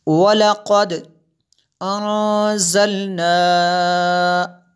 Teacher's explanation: نون ساکن ہے اس کے بعد زا حروف اخفا میں سے، اس لیے یہاں پہ اخفا ہوا، غنہ کیا ہم نے